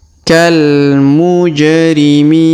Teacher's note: huruf ja berharakat sukun maka kita pantulkan Kal mujrimin kemudian huruf Mi kita panjangkan 2 EMP atau en